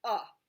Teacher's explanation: say uh okay sometimes we get that mixed up with a when we see a in a sentence like this is a cat we say that word as uh okay it makes the u sound it's called actually a schwa sound